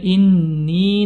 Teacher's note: pertemuan ee huruf mad dengan Hamzah dalam satu kata kemudian inni Nun bertasydid maka diberikan gunahnya